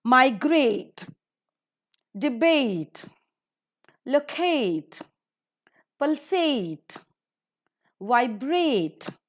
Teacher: all these words are ending with a t e and they're accordingly given the stress in the second syllable